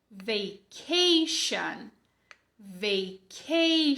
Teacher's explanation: Não é o som de tch, como em tchau. É o som de sh, como em xícara.